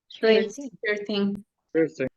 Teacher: from number 13, you are going to use the stress syllable on the word teen